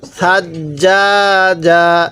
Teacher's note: এই সাটা নরম করে পড়বো জিমটা শক্ত করে পড়বো